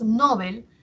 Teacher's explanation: estamos haciendo que la sílaba tónica esté en no, ¿cierto? Y mientras que Bel hacemos que sea la átona